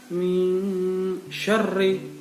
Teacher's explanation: non mati bertemu shin, itu bacaan ikhfa. Ya, artinya samar-samar